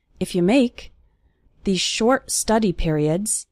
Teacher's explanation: the words if and you are fast they are just leading up to the word make